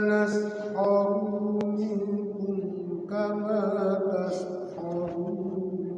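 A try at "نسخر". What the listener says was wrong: Sekali lagi Pak Haji, naskharu ru-nya pendek. Fa inna naskharu min, langsung ru-nya pendek.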